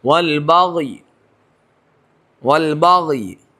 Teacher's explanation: نیچے زیر ہے اس کو تہائی حرکت دے کر ادا کریں گے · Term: وقفے بالروم